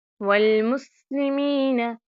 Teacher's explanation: سین کے اوپر سیٹی کی آواز پیدا کرنی ہوتی ہے تاکہ ہمارا سین جو ہے اچھی طرح سے ادا ہو · یا مدہ آپ نے ایک الف کے برابر لمبا کرنا ہے